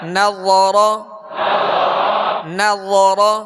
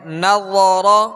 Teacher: نون باریک، را پر اور نرمی کے ساتھ، را کو پر پڑھیں گے، زبر ہے